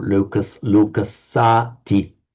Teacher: And the final word then, just lokassa, or lokassati, with the lengthened a before the t